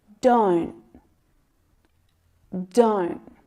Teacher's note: it's really really common to hear that stop te in negative contractions · the stop T stops it short before the air is released. It's like you catch the sound. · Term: stopped T sound